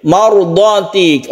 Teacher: Kemudian ini mat wajib muttasil. Mardati, roknya kita baca tebal karena sebelumnya ada fathah, apalagi diikuti oleh huruf yang isti'la ini dot ini ya, maka ini otomatis tebal ya. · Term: rok yang tebal